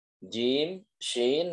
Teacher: posisinya adalah di tengah lidah dan langit-langit mulut